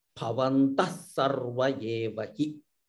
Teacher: there is a visarga followed by sa. So you'll get the effect of a double sa.